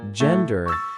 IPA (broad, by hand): ˈdʒɛndər